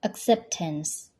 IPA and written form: əkˈseptəns (Acceptance)